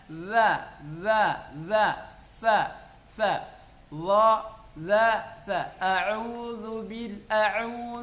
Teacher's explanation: ujung lidah bertemu dengan ujung gigi bagian atas